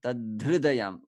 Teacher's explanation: ha changed into the aspirated dha because it followed dha